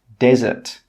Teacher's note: With this word, the stress is on the first syllable.